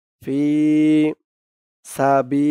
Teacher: এক আলিফ টান জের পরে ইয়া সাকিন